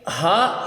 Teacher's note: یہ ہا جو ہے اس کو ہم 3 الف کے برابر لمبا کریں گے